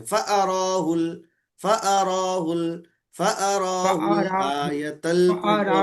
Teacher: आ को नहीं खींचना है। आ हरकत वाला है ना, मुतहरिक है ना वो, जी जी मुतहरिक को जी नहीं खींचते।